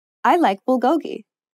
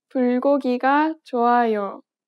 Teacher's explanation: Native speakers do not place stress on any particular syllable.